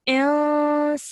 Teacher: you can produce a 2-second light nasal sound. So you would say insanu.